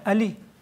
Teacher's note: one ayn is no longer ayn in Persian language. It is just the first vowel a.